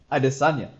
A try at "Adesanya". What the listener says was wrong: No, the emphasis is on the E. Adesanya, not Adesanya.